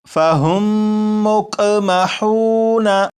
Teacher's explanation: میم ساکن کے بعد دوسری میم ہو تو وہاں پر غنہ کر کے ہی پڑھیں گے